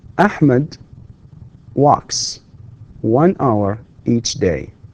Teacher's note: notice that the final sound in the verb walk is voiceless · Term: s sound